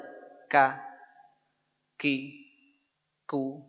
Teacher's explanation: Kalau dirinci, pangkal lidah dengan langit-langit lunak. Ya, dan keras sekaligus. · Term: huruf K